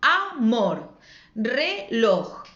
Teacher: La última es la que suena con más fuerza y entonces esa palabra es aguda.